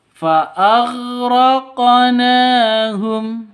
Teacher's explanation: Karena di tengah seperti ini namanya qalqalah sugro. Lebih rendah pantulannya ya ketimbang qalqalah kubro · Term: kolkolah sugro